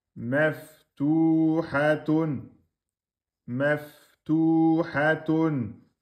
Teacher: Fa soukoun, un temps et demi. Ta, damma, prolongation, deux temps.